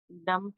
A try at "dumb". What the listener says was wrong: डम बोलते, डम, बी साइलेंट।